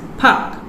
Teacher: in standard english would be pronounced as pak in singaporean english where the word has been simplified with the deletion of r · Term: deletion of a consonant cluster